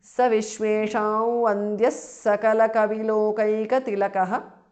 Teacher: Saha visarga is dropped because of sandhi